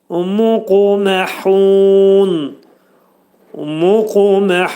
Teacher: Yəni qütbicət hərfidir. Qaf hərfi vurğulu şəkildə deyilir və azcıq uy-ya meyillidir. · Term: qəlqələ hərfidir